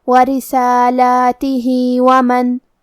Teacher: یہاں بھی مد صلہ صغرا ہے، ہم اپنی آواز 2 مد کے برابر لمبی کریں گے